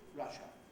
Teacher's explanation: Which is the way that most EFL learners pronounce the name of the country, Russia. Of course, all native English speakers have a schwa vowel, a central vowel at the end of that word. Most non-native speakers tend to see the letter A and want to make it Russia.